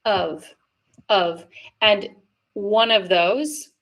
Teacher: I tend to always pronounce it, even in rapid speech, but you might hear people drop off the V sound altogether, and it might just sound like one of those.